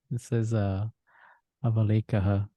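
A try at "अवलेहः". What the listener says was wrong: Not lekaha, lehaha.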